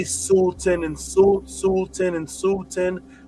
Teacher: the sound of it created a l sound in between the u and the t and even when you say sulten and s sulten and sulten sometimes you can't even hear the l because the same sound.